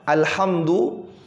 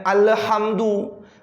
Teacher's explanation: huruf lam ini bukan huruf qalqalah. Nah, jadi tidak boleh membal di situ, ya.